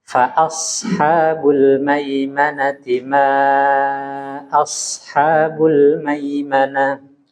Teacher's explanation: Sedikit lagi huruf shad agak ditebalkan.